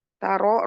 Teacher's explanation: ro tafkhim karena berharakat fathah